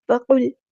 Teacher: قاف ہمارا heavy letter ہے، پورا ادا کرنے، لام ساکن کو ہلانا نہیں ہے اور لام ساکن کو باریک پڑھنا ہے